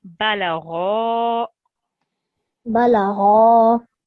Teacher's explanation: So you extended it beautifully, 2 seconds. But this ghain is a thick letter. So we need to have rounded lips.